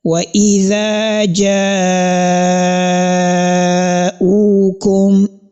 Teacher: وَإِذَا جَاءُوكُمْ, this long elongation, which is this is the type of elongation that you can see there, is what is known as al-mad al-wajib al-muttasil, which has a duration of 5 haraka, that is 2.5 seconds